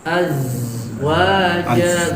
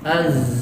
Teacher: Zal nggak punya sifat safir, sedangkan zai punya sifat safir.